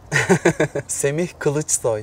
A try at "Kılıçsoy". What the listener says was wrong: Kılıçsoy. I understand you can't pronounce ı.